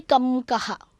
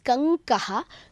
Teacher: So if I say Kankaha, so what do you pronounce? You cannot say Kamkaha. It is Kankaha. So Ng comes in between.